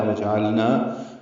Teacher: لام ساکن پہ اظہار، نن میں ادغام شمسی مع الغنہ ہے